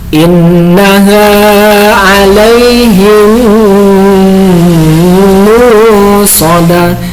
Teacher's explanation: Harus dibaca panjang ya ketika mim dengan mim, karena ini idgham mutamatsilan.